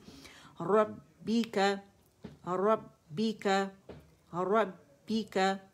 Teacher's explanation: را مخفف میں فتحہ کے ساتھ ہے با مشدد ہے اس میں جماؤ بھی دیں گے اور سپلٹس آف سیکنڈ کا پاز بھی ہے کیونکہ اس میں شدہ بھی ہے